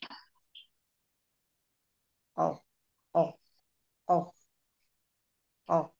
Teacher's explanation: itu adalah bagian lidah yang dekat dari tenggorokan gu Ya baik pangkal lidah bagian atas bertemu dengan langit-langit yang lunak · kalau Hames nafasnya mengalir kalau jahr tertahan nafasnya ter tertahan jadi ketika kita mengucapkan huruf q itu dalam keadaan nafas yang tertahan tertahan di makhrajnya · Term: huruf qof